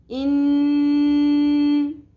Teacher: نون پہ تشدید ہے، نون پہ غنہ کریں گے، نون مشدد پہ آواز کو کھینچیں گے ناک میں